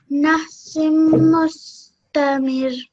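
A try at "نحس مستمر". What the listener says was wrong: Yes, but this needs to be 2 seconds. So a little bit longer. Nahsim mustamir.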